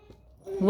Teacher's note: वा का उच्चारण स्थान है दंत प्लस ओष्ठ। दंत और ओष्ठ दोनों से मिलकर इसका उच्चारण होता है वा का